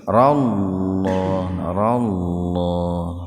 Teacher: huruf lam didahului fathah ya jadi lamnya dibaca tebal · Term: tabhim lafdul jalalah